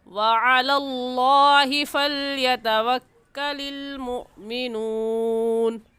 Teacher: وعلى الله لفظ اللہ سے پہلے زبر ہے، لفظ اللہ کو موٹا کریں گے اور عین حلق کے درمیانی حصے سے عین نکلتا ہے